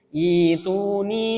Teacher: Hamzah yang berharokat sukun itu diganti menjadi ya sukun. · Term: mad badal